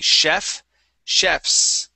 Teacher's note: it's chefs with that voiceless s